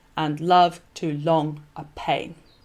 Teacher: pain is emphasized by the rhythm as well as by the rhyme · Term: masculine ending